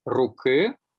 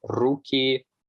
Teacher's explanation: The old y ending has been preserved after the velar sounds. For instance, in Rusyn, you say ruky, as opposed to Russian and Ukrainian, where you say ruki or ruky, respectively.